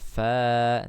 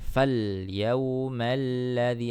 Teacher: di sini ada alif ya, atau disebut dengan hamzah wasal ya, jadi langsung ke huruf lamnya. Jadi tidak dipanjangkan